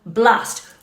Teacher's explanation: you will place your stress on that opening syllable blast with the plosive B sound